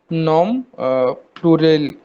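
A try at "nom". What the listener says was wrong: नॉम में हम M pronounce नहीं करते हैं और एस भी नहीं करते. बस नो. नो प्लूरियल.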